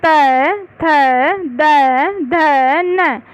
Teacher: दंतय्य कहलाते हैं। इन वर्णों का उच्चारण करने में जिह्वा दांतों का स्पर्श करती है।